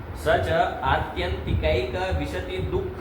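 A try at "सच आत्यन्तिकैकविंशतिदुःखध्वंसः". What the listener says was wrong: विशति कहाँ है? विंशति, थोड़ा तो संस्कृत की तरह बोलो। एक विंशति नहीं शब्द सुने हो? 21 को एक विंशति कहते हैं।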